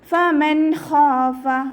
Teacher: ആക്കി കൊടുക്കുക ഫമൻഹഫ നൂൻ സാക്കിനക്ക് ശേഷം ഇവഹാറിന്റെ ലെറ്റർ ആയിട്ടുള്ള ഹ വന്നിട്ടുണ്ട് നൂൻ സാക്കിനയെ വ്യക്തമാക്കി മണിക്കാതെ ഉച്ചരിക്കുക നൂനിന്റെ സൗണ്ടിനെ വ്യക്തമായിട്ട് കേൾപ്പിക്കുക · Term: ഇദ്ഹാറിൻ്റെ